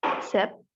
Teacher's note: It's voiceless alveolar fricative.